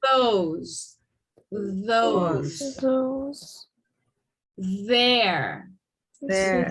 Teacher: make the sound by forcing air through the opening between your teeth and tongue and vibrate your vocal cords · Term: voice th sound